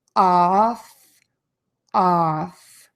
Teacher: So again, we know from before with that short ah, the mouth is open in a wide oval.